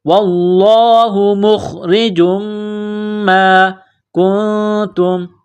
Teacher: جیم کو میم کے ساتھ پلس کرنا ہے، جیم کے اوپر تنوین ہے، میم مشدد ہے تو یہاں غنہ کیا جائے گا